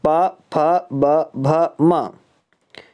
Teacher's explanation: इनका उच्चारण स्थान जो है वो ओष्ठ होता है